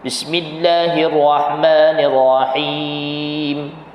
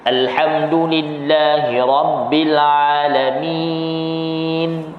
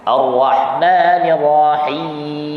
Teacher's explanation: Bila kita tutup je ataupun kita sampai kepada huruf mim, dia ada bunyi gunnah asliyah.